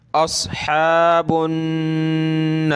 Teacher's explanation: صاد کو موٹا کریں